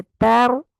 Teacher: ता को होठों को चीर के अदा करना है और रा को पुर कर देना